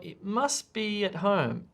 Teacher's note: i don't hit the t sound